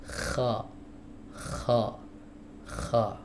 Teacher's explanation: akar lidah ditempelkan ke langit-langit lunak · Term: huruf kha